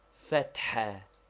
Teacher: What is the name of this vowel? Fatha, to be pronounced with a roughly aspirated ha, which we have indicated by a dot under it, and which is somewhat like HH or doubly strong H.